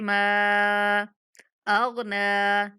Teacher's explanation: नून के ऊपर खड़ा ज़बर है तो इसलिए हम नून को भी 1 सेकंड तक खींचेंगे।